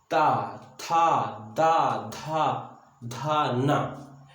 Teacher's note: जीभ हमारी वहां को यानी दांत को टच कर रही इसीलिए इसको दंत कहा गया